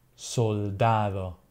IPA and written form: solˈdað̞o (soldado)